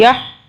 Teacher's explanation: ہا کو جو ہے ہا کو حلق سے ادا کرنا ہے